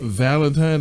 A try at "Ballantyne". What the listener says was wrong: Ballantyne with a B. Ballantyne. No. No. Ballantyne. No, Ballantyne.